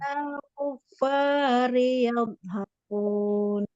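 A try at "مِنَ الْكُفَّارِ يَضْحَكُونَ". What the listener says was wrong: Ya, titolahnya kurang tebal ya. Kuf. Harus ada itunya.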